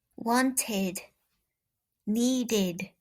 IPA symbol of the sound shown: ɪd